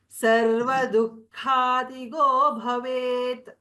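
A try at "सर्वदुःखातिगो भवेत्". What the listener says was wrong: Sarva dukkatigo bhavet. Du visarga followed by kha mahaprana. Sarva dukkati. Otherwise it was correct.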